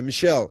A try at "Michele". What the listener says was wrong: It's Michele. keeps misspelling it with two L's. only one. Michele.